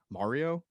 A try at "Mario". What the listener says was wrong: Okay, are you putting an or in there? It's Mario.